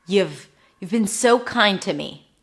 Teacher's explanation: Notice how I emphasize the so kind, and then the you have became nothing